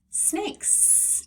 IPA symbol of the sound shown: s